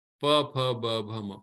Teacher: final sounds are coming from the lips called the labials, and the last of the labial is ma.